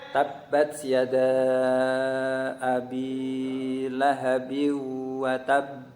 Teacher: tetapi yang betul membaca Qalqalah itu harus cepat harus cepat sehingga menghasilkan pantulan